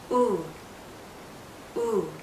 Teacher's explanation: this is tense the circle that we make with our lips is tight